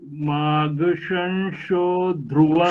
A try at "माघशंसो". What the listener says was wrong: शो नहीं, सो। सो